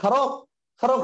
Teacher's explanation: ওরা হচ্ছে অল্পপ্রাণটাকে মহাপ্রাণ করে ফেললো